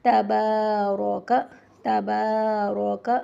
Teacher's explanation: تبارک میں الف مدہ ہے، 1 الف کے برابر لمبا کریں گے، اور با کے اوپر زبر ہے، اس کے بعد الف ہے۔